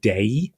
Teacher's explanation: thongs which is the pronunciation of two vowels as one syllable like in day you have that slide from a to Y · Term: dip thongs